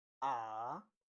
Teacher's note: The third one is ah. You fall and rise.